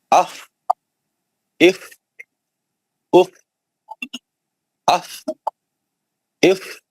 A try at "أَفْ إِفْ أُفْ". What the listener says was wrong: لمبا لمبا کریے. اف اف اف لمبا لمبا کریے.